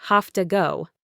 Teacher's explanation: In I have to go, the to often reduces to a very quick ta, sounding like have to go. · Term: reduction